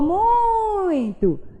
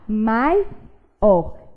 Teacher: Porque muito tem a penúltima sílaba tônica, o mui. E maior tem a última sílaba tônica, que é o or